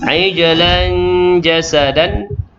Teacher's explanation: tanwin bertemu dengan jim adalah ikhfa hakiki, dengung 2 harakat